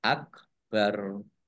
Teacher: Nah ini roknya dibaca sukun karena wakof dan dibaca pendek, wakofnya tidak ada tanda panjangnya.